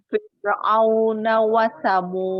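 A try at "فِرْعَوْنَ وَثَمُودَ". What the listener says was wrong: Roknya ditipiskan. Rok sukun sebelumnya kasroh. Roknya dibaca tipis.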